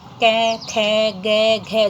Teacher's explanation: ये सभी हमारे कंठ से बोली जाती हैं, इसलिए ये कंठ्य ध्वनि मानी जाती हैं। कै, खे, गे, घे, जीभ हमारे मुख में कहीं स्पर्श नहीं करती, केवल कंठ पर जो है कंठ से उच्चरित होती है, इस कारण से कंठ्य ध्वनि मानी जाती है।